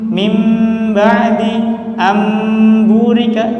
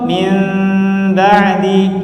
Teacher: Kalau kita baca mim ba'di, itu di situ mimnya bukan ikhfa tetapi izhar